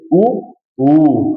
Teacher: आधार पे कौन से कौन से स्वर बोले जाते हैं, तो होठों से उच्चारित होने वाले स्वर जिनमें होठ गोल होते हैं , जैसे ऊ ऊ, है ना, ऊ ऊ, ये पूरा जो